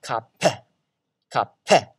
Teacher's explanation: it's just an aspiration pulse of bursts of air on really on the end of the P sound